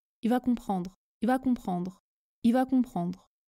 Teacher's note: comprendre ce prononce i va comprendre je ne prononce pas le l de il quand je parle vite le R est prononcé très légèrement